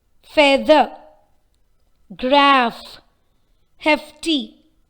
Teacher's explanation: The common fricative sound in all the 3 words is f.